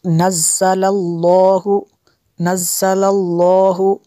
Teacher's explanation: لفظ اللہ کو پر کرنا ہے، اس سے پہلے زبر ہے اس لیے